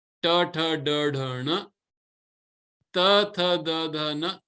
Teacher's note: Ta is where your tongue is touching the palate.